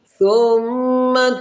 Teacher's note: یہ میم مشدد ہے اور یہاں پر ہمیشہ غنہ کیا جائے گا۔